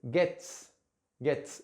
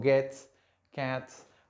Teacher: cuando pronunció la t son sonidos que no tienen voz